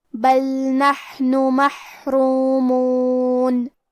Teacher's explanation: کلمت محرومون میں را کے بعد مد واو ہے اور میم کے بعد بھی مد واو ہے تو ہم یہ دونوں مد کو برابر سے ادا کریں گے